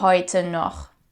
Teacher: we have this very harsh sound, which is pronounced in the back of your throat